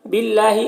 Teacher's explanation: اللہ کے لام کو باریک پڑھیں گے